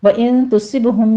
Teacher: میں نون ساکن کا اخفا حقیقی ہے، 2 کاؤنٹ کریں گے، صاد کو پر پڑھتے ہوئے آگے با پر قلقلہ کرنا ہے